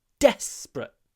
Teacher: we say then the stress moves we're in a desperate situation now the stress is on the first syllable